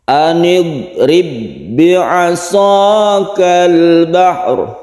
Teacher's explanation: Karena sudah menjadi tasydid, maka ba ini tidak qalqalah lagi. Ba ini tidak memantul karena ba yang ada di sini yang sukun ini sudah melebur ke dalam ba yang berikutnya. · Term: idgham mithlain